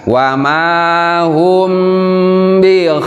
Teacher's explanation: Hum, nah di sini kita menemukan materi kita, yaitu mim sukun berhadapan dengan huruf ba, itu namanya ikhfa sapawi